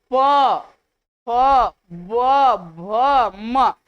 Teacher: जब हम प बोल रहे हैं तो हमारा ओष्ठ जो है बार बार सट रहा है, इसीलिए ओष्ठ से बोला जाता है।